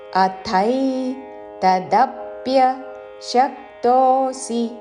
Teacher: అథై ఆ పక్కన మహాప్రాణాక్షము థ ఐత్వముతో, ధాతో అద్ధై కాదు, అథై తదప్య శక్తోసి, దా మీద ఆఘాత, తాళవ్య ష మీద ఆఘాత, తదప్య శక్తోసి, చివరిలో సి హ్రస్వము.